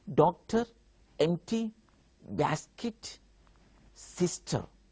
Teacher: Stress will be on first syllable